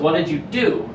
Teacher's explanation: it starts really high and loud but then your voice drops off at the end